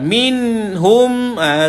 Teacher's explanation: tuan-tuan tidak perlu baca dia di dalam keadaan dengung. Jelaskan saja. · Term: izhar halki